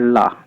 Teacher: ला का उच्चारण करते समय हवा जिह्वा के दोनों पार्श्व भागों से बाहर निकल जाती है, यानी जिह्वा के बगल से निकल जाती है, इसीलिए इसे पार्श्विक व्यंजन कहा जाता है।